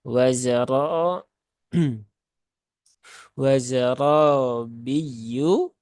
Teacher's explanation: maka r-nya dibaca dengan tafkhim ya dengan tebal ya dibaca dengan tebal